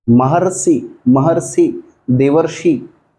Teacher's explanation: इसमें अर की ध्वनि नहीं आएगी, र की ध्वनि आएगी आधे र की।